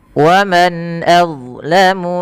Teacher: Suara nunnya jelas dibaca dengan izhar